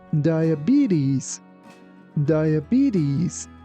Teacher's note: in US pronunciation, letter T here is pronounced like D.